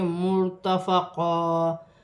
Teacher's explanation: کے ساتھ ملا کر پڑھا جائے گا، اور را ساکن ہے، را کو پیش کے ساتھ میم کی حرکت کے ساتھ ملا کر پڑھا جائے گا، را موٹی پڑھی جائے گی